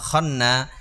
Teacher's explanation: খা নুনের সাথে মিলায় পড়তে হবে এবং নুন নুনে গুন্না হবে তাহলে কিভাবে মিলায়ে পড়বো খ নুন জবর খান নুন আলিফ জবর